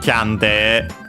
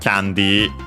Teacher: both are accented on uh the first syllable just like in English as expected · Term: accented on the first syllable